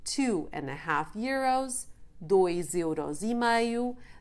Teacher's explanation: the phonetic connection of the final S of the 2 with the E of euros, making the sound of the S change to a Z sound.